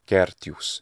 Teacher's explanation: I like gertius, and we hear that the short e sound is almost consonantal